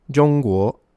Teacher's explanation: guo is second tone, so it's a rising tone, a bit like when you ask a question